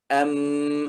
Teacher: keluar dari dua bibir tapi suaranya keluar dari hidung juga